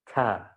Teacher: Yang kedua, makhrajnya kalau ngomong ta, ti, tu, dia bercampur, ini bergeser. Yang dari ujung lidah bercampur dengan yang di halq, dengan tenggorokan.